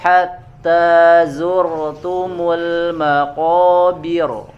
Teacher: bir di situ harus tipis, tidak boleh digemakkan.